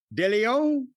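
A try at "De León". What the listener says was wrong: No, De Leon. There's an N at the end, isn't there?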